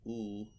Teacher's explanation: If you say oo, your mouth is still closed, your tongue is towards the back, and your lips are rounded